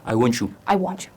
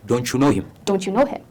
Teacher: ቃሉን ስታወቀው it's ending with a t አይደለ? ቲ እኮ ነው ያለቀው፣ ግን ከዩ ጋር አንድ ላይ ሲሆን the sound is going to become chu